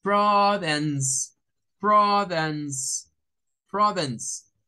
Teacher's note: La C acá, miren, sonido de S, de S como la llanta pinchada